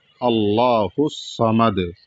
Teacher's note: اللہ الصمد، ہا کو صاد میں ملایا جائے گا، صاد پر زبر ہے اور صاد کو موٹا پڑھا جائے گا